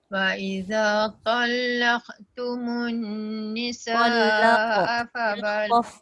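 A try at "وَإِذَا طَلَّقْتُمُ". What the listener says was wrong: Qaf tu, qalqalah tu dah bunyi dah tapi tak tebal. Wa idza talaqtumun, tebal dan sambung.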